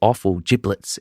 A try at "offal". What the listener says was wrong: And that's offal, O-F-F-A-L. It sounded like you said awful.